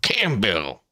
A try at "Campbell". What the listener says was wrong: With no P, not Campbell.